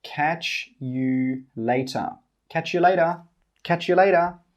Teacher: We don't say 'catch you'. We say 'catch yuh'.